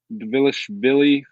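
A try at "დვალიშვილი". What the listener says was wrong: I don't think you pronounced the D.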